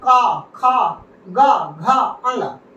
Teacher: ये हमारे कंठ से बोले जा रहे हैं